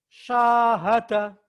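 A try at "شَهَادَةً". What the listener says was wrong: Bukan so, tapi sya. Huruf Sunda. Huruf Sunda bukan huruf Jawa. Bukan O, tapi A. Sya.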